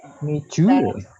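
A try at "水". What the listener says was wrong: Miju ya, dengarnya miju ya. Mizu, zu, za, zi, zu. Jadi kita harus jelas mengucapkan. Mizu, ucapkan mizu aja.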